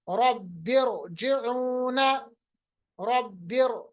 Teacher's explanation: रा साकिन है, माकबल जो जेर है वो दूसरे कलिमे में, इस सिचुएशन में भी रा को मोटा पढ़ेंगे